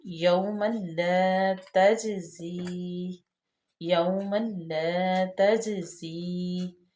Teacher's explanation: جیم جو ہے اس پہ ہم قلقلہ کریں گے کیونکہ جیم جو ہے حروف قلقلہ میں سے ہے، قطب جدن میں سے، اور ساکن بھی ہے، ما قبل مفتوح ہے، تو اس لیے اس کو ہلا کے پڑھیں گے تجزی۔